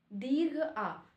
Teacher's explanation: जिसका उच्चारण करने पर मुह पूरा खुला रहता है पूरा खुला रहता है उसे विवृत स्वर कहते हैं